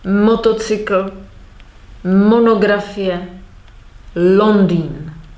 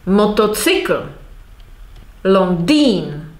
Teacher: I'm stressing the first syllable.